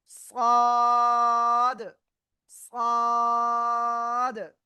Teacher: জিহ্বার আগার সামনে নিচে 2 দাঁতের পেটও আগার সাথে লাগাবেন, লাগিয়ে একটু মোটা আওয়াজে আপনার উচ্চারণ করতে হবে 4 আলিফটা নিয়ে।